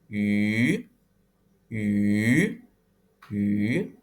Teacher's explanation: sambil mengucapkan I, namun bibirnya dimonyongin menjadi U.